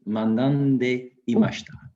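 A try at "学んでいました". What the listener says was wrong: That's perfect. Perfect. You can use manande. It's absolutely fine.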